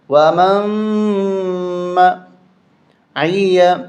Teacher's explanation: یہاں میم کو میم کے ساتھ، ومن، میم نون میم، یہ ملا کے پڑھیں گے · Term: غنہ